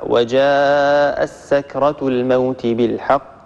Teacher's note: عندنا تاء ساكنة بعدها سين، فعندنا هنا إدغام صغير لأبي عمرو